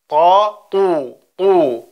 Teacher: Zunächst, dass das Ta dunkel ist. Das heißt, ein Großteil der Zunge klebt am Gaumen.